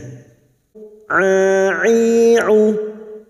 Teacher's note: huruf ain jangan samakan dengan hamzah, huruf ain yang memiliki sifat tawasud dan jahr